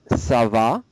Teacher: Your voice goes up because it's a question.